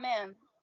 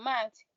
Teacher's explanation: The vowel sounds in men nasalized versus matched non-nasalized. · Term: Nasalization allophone